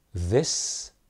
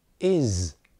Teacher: It's this, clear S, but it's is with a Z. Both are spelled S.